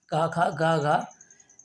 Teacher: कंठ की ध्वनियाँ हैं, ये कंठ से बोली जाती हैं